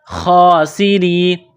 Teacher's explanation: را کو باریک کرنا ہے، را کے نیچے زیر ہے